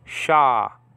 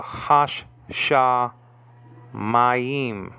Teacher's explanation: So you have the article ha, and the sh is double, so you have to put a sh with the first syllable, so hash. And then the sh remains in the second syllable, and then you pronounce that first, sh, and then the A class underneath it is like A, like in father.